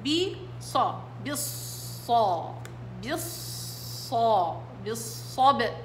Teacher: الالف بالباء ساقطة واللام مدغمة